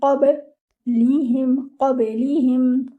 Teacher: your ba should be with qalqala